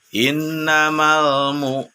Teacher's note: mana bau sukun itu apabila sebelumnya ada harokat dhomah maka ini dihukumi bacaan Mad Thobi'i dengan dibaca panjang 2 harokat atau satu Alif